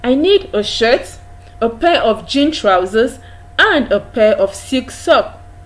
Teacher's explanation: when you're listing items you list those items using the rising tone